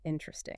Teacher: it's like you're almost swallowing that second syllable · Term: reduction